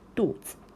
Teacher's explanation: it is like pronouncing neutral tone, which means it do not have any like one of the four tones · Here 子, right, 子, this character itself, it should be pronounced as the third tone 子, right, but here it is like it does not have that tone. It's just 肚子.